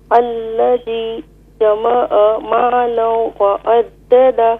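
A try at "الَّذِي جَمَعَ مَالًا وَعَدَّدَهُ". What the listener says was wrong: یہاں غنہ کریں, مالا وعددہ, غنہ کہتے ہیں taking the voice into nose.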